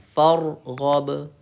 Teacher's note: فرغب میں را کو پر پڑھنا ہے.